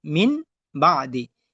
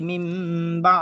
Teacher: নুনে সাকিন এবং তানভিনের পরে যদি বা আসে তখন আমাদেরকে মিম দ্বারা পরিবর্তন করিয়া গুণনা করিয়া পড়তে হবে